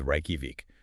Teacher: That J sound becomes a Y.